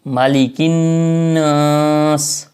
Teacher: نون کے اوپر پھر غنہ ہے، یہاں پر ان کو ناک میں آواز لے جانا ہے